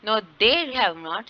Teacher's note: यहाँ पे दे पे स्ट्रेस आ रहा है